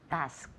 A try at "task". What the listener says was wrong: Task. Yeah, with that nice hard K.